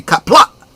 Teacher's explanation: There is a glottal stop at the end of kapla, so it should be kapla, not kapla.